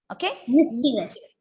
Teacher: there are 3 syllables in this word, mischievous. And you are stressing on the first syllable